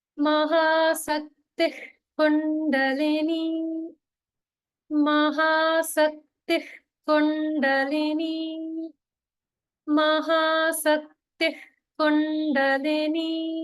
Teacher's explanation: a common mistake that people make is they pronounce Mahasaktihi as Mahashaktihi.